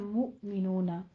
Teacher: دونوں ہونٹوں کو گول کر کے ادا کرنا ہے